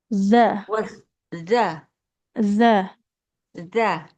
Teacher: Ujung lidah tempelkan ke ujung gigi seri atas. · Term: Huruf dalnya